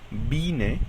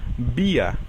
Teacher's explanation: suena como en español juntando los dos labios